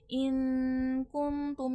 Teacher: नून साकिन में इफा होता है। इफा में नून की आवाज छुपती है। यहां पर इफा होगा।